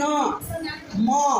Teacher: হাওয়া মুখ দিয়েও আসছে, খানিকটা নাক দিয়েও আসছে। তাই এইগুলো হচ্ছে নাসিক্য বর্ণ, যখন উচ্চারণ করছে সেটা হচ্ছে নাসিক্য ধ্বনি।